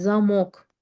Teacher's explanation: Mən vurğunu a-nın üzərinə qoyuram. Deyirəm daha doğrusu onun üzərinə qoyuram və deyirəm ki, zamok, yəni qıfıl.